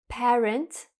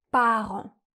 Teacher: Sauf que en anglais, on a un son « e », parent. En français, on a un son « a »